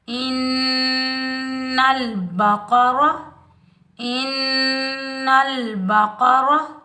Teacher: ایک الف کی مقدار میں غنہ کریں گے ، نون مشدد کو سختی اور جماؤ کے ساتھ بھی ادا